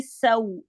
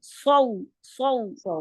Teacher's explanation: سین ایک باریک حرف ہے اور صاد ایک موٹا حرف ہے. دونوں میں سیٹی پائی جاتی ہے. سین کی سیٹی باریک ہوگی سو, یہ والی ساؤنڈ سو سو.